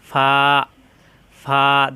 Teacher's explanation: নিচের ঠোঁটের পেট উপরের দাঁতের আগার সঙ্গে লাগাইয়া নরম করে উচ্চারণ ফা ফা দুই ঠোঁট একাত্র হবে না উপরের দাঁতের আগা নিচের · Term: 14 নাম্বার মাখরাজ